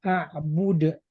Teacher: qalqalah kubra dia harus dipantulkan. Dipantulkan artinya dia tidak boleh dibaca a'bud.